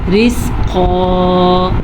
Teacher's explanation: قاف کو موٹا پڑھنا ہے اور الف مدہ کے ساتھ پڑھنا ہے